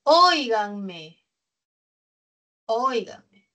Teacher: Es esdrújula, ¿no? Está en la antepenúltima sílaba del acento. Esto es un diptongo.